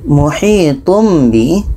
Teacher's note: tanwin bertemu ba dengung